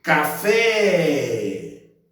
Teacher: fé é a sílaba tônica da palavra como essa sílaba é a última então não tensa e que a sílaba tônica é a última · Onde eu demorei mais? Eu demorei no fé. Então, fé é a sílaba tônica da palavra.